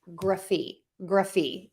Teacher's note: I'm using that schwa sound, that short, quick sound in there